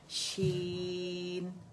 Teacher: اچھا شین کو ہم نے بہت زیادہ جماؤ نہیں دینا کہ اس کو ڈبل کر دیں